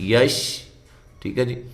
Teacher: شین کو ادا کرتے ہوئے منہ میں آواز پھیل جائے